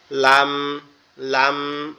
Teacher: লামটা এক জায়গা থেকে জিহ্বার আগা উপরের তালুর সঙ্গে লাগবে, লেগে উচ্চারিত হবে লাম লাম, এরকম ভাবে।